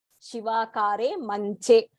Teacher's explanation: In general, we say Manjam. So we tend to say Ja instead of Cha